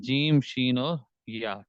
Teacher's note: پھر اسی طرح جیم، شین، یا، یہ تین حروف ہیں، یہ تین حروف ادا ہوتے ہیں زبان کا درمیانی حصہ بالمقابل اوپر کا تالو، اس سے یہ تین حروف ادا ہوتے ہیں